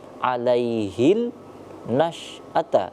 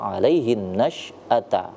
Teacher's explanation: Bukan, karena ini alif lam syamsiyah, alif lamnya tidak dibaca tapi langsung melebur ke huruf ketiga. Itu kenapa dibaca alaihin nasy'ata.